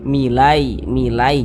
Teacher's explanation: kalau mengucapkan huruf Lin Yang jadi pada huruf Ya Sukun jangan sampai condong ke e